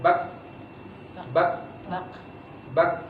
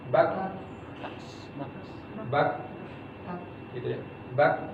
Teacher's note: Dia punya sifat hams, ada aliran udara yang keluar, tapi dia juga ada di syiddah. Ya. Tidak ada durasi udara yang keluar, tidak ada durasi suara yang keluar.